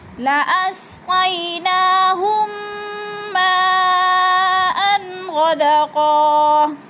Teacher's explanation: یعنی ادھر ادغام شفوی کریں گے، غنہ بھی کریں گے اور سختی سے جباؤ کے ساتھ پڑھیں گے